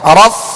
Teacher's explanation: اوپر کے دانتوں کے کنارے اور نچلے ہونٹ کے تر حصے سے فا ادا ہوتا ہے